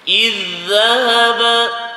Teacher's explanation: Jumpa dua huruf yang sama, sifat sama, makhraj sama kan? Ha jadi terus masuk pada zal. Jadi kita jangan baca, jangan baca iz dan dia bukan huruf qalqalah pun kan. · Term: Idgham